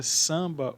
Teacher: Na palavra samba, o A e o M não são pronunciados. O A ele passa por um processo de nasalização. É como se na palavra samba, o ar com N correspondesse ao som de an, que é o ar com tio.